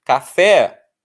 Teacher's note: Café, o fé é a forte. Então essa é uma palavra oxítona.